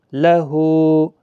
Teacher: لام زبر ل، ہا الٹا پیش ہو، لہو، ہا کو کھینچنا ہے ایک الف کے برابر